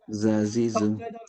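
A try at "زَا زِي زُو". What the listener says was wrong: শক্ত হয়ে গেল। জাজিজু।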